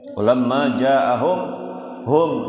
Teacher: mim mati ketemu dengan ro. Nah itu idhar syafawi, bacanya jelas, nggak boleh mendengung. Kan idhar itu artinya jelas.